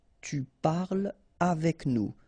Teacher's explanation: So no liaison here between parle and avec